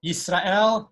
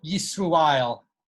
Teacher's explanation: so the Kometz Aleph O in Hasidic Yiddish is U